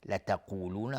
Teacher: قاف از حروف استعلاء غلیظ تلفظ میشه